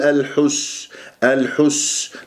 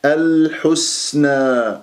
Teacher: أنا خلصت الحركات وما سحبت ضمة الحاء إلى السين، والسين ساكنة صفير، من أحرف الصفير، أحرف الصفير ثلاثة، الصاد أقواها السين ثم الزاي، ويجري فيها الصوت والنفس، الحسنى أقف بما الطبيعي حركتين لأنه ألف ساكن قبلها نون مفتوح.